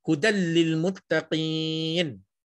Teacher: Nun tu tak dibunyikan langsung. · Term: idgham